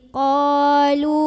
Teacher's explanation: lu mad tabi'i karena ada waw sukun sebelumnya dhammah, maka huruf lam yang baris dhammah dipanjangkan 2 harokat. Wawnya berfungsi sebagai pemanjang.